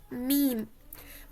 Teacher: मीम बंद होठों के खुश्क हिस्से को आपस में मिलाने से मीम अदा होता है